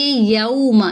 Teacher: واو ساکن سے پہلے زبر ہے، میم کی حرکت کو لمبا نہیں کریں گے، یوما اس کو یو نہیں پڑھیں گے، یو پڑھیں گے، ٹھیک ہے۔ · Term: واو لین